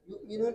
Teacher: یؤمنون پر جب وقف کریں گے تو حمزہ واو سے تبدیل ہوگا